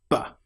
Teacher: The sound B is created with your lips fully together, not half together, not V, but B. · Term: clear B, popping sound